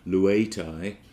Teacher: the epsilon is just lengthened